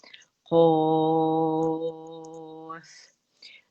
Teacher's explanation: ठीक है, आइन सी क़ाफ के लिए थोड़ा सा मुंह खोलिएगा ताकि पीछे आपकी ज़बान की जड़ ऊपर जाके नरम तालु से लगे और उसकी मोटाई अदा हो सके